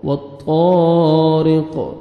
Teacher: والسماء والطا، طا کو موٹا کر کے پڑھیں گے، الف مد ہے 1 سیکنڈ آپ نے طا کو کھینچنا بھی ہے، را کے نیچے کسرہ ہے، را کو باریک کر کے پڑھنا ہے · وقف کی صورت میں قاف ساکن ہو جائے گا، را کسرہ، قاف سکون، رق، والطارق، والسماء والطارق۔